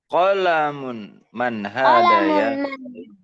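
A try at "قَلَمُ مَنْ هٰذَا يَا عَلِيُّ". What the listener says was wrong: Di sini tidak boleh ditanwin ya. Jadi qalamu man gitu. Qalamu man hadza ya Aliyu?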